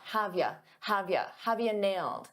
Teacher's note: a lot of native speakers reduce you to just a ya.